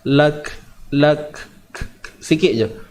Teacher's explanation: huruf kaf ni kalau kita berhenti nanti ada bunyi sifat hams.